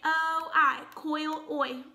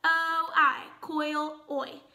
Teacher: so in this case oh I says Oy and it glides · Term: diphthong